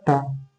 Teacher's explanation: मूर्धन्य अल्प प्राण अघोष वर्ण का उदाहरण है